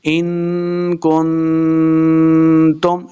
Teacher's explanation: اخفاء کا قاعدہ ہے غنہ کرنا ہے